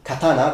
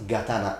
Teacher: the first consonant of the second word changes from unvoiced to voiced meaning that c becomes G and S becomes Z for example